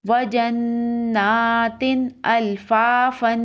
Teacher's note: نون مشدد ہے، نون کے اوپر تشدید ہے، یہاں غنہ ہوگا، اور تا دو زیر تین کے بعد حروف حلقی ہے تو یہاں غنہ نہیں کریں گے۔ · تا دو زیر تین کے بعد حروف حلقی ہے تو یہاں غنہ نہیں کریں گے۔ وجناتن الفافن، وقف، وجناتن الفافا۔